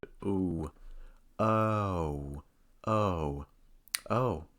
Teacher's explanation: Because the O sound is a diphthong, we'll need to do a little bit of movement. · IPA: /OƱ/